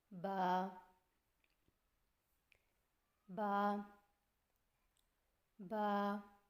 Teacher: با کی ادائیگی میں ہونٹوں کے گیلے حصے کو سختی سے ملا کر باریک آواز میں پڑھیں